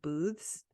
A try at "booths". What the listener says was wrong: And kind of sounds like you're saying booze, like the alcohol.